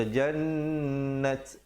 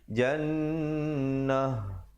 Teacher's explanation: Bila kita waqaf dia bertukar menjadi ha. Jadi kita tukarkan, jangan pula baca jannat, salah dia kena bunyi jannah. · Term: ta marbutah